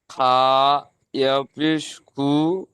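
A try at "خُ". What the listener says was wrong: একটু এটা খা পড়বেন না, এটা খ পড়বেন। খ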